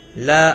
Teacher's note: لا الف مدہ ہے، ایک الف کے برابر کھینچ کر پڑھیں گے